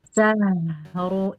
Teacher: kalau syahru dia tebal jadi ke gusi belakang. Syahru, ingat satu kata jangan dijeda ya, jangan syahru, jangan begitu.